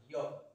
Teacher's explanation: तो य का उच्चारण स्थान तालु से होगा